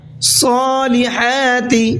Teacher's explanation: وعملوا الصالحات، وعملوا، عین کو حلق سے نکالنا ہے، صالحات، صاد کو پر کر کے پڑھیں گے اور حا کو حلق سے نکال کر کے پڑھیں گے